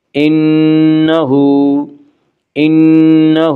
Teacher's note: انہ، ہا کے اوپر الٹا پیش ہے، الٹا پیش قائم مقام ہے واو مدہ کے، اس لیے الٹا پیش کو ایک الف کے برابر کھینچ کر پڑھیں گے۔